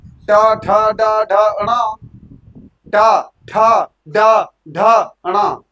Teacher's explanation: जब अड़ा बोल रहे हैं तुरंत नाक से आवाज निकल रही है। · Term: अनुनासिक